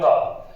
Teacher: इसलिए कभी भी अगर अंग का पूछे तो सिर्फ कंठ नहीं बताना है गौर के अनुसार, नासिका भी सिर्फ नहीं बताना है, क्योंकि अंग का उच्चारण स्थान दोनों जगह से होता है, कंठ से और नासिका से, दोनों से मिलाकर बोलते हैं तब आता है अंग। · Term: नासिक्य